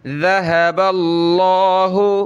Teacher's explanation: لفظ اللہ سے پہلے زبر ہے با پہ تو لفظ اللہ کو موٹا کریں گے